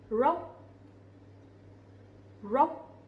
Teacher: The R sound, we will not pronounce it too strongly, but instead we pronounce similar to English.